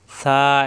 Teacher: নমুনা দেখে নক্তা দেখে আমাদেরকে হরফ চিনতে হবে আর মাকরাস সহ উচ্চারণ করতে হবে। সা নরম করে, জিহ্বার আগা দাঁতের আগায়। সা এক আলিফ পরিমাণ টান।